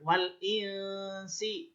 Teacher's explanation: Sebab nun sukun bertemu sin, bacanya samar